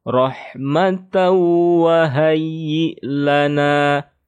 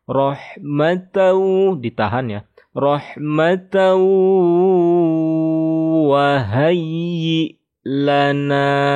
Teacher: Kita harus membaca tasydidnya dengan gunnah. Kalau gunnah berarti kita harus menahan sekitar 3 harokat ya. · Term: idgham bi gunnah